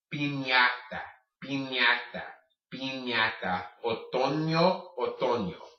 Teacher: when you see the tilde, which is that little accent mark over the N, that's as if you were to have a Y coming right after that N.